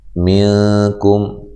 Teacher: یہاں نون ساکن کا اخفا مع الغنہ ہے، کم کاف باریک ہے، میم ساکن کا اظہار ہے۔